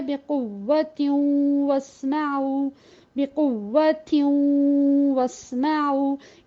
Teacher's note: یہ جو غنہ تھا یہ نون کا تھا اور واو پھر ہم نے الگ سے ادا کیا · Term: ادغام ناقص